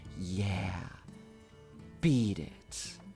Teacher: the way he does it it's like very breathy and dramatic